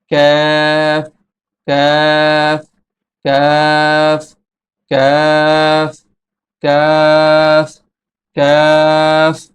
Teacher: কাফ হরফের মাখরাজ হচ্ছে জিহ্বার গোড়া থেকে একটু আগে বাড়িয়ে তার বরাবর উপরে তালুর সঙ্গে লাগিয়ে উচ্চারিত হয়। এই কাফের মাখরাজ থেকে একটু বাড়তে হবে, সামনে আসতে হবে।